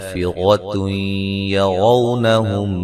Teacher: نون تنوین کا ادغام مع الغنہ ہے